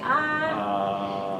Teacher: I see that the uvula and the soft palate rise